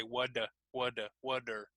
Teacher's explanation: this is what's called the flap T basically we hear this in North American English so that's what happens when we have that T sound it sounds like a D what so instead of saying what we say what what what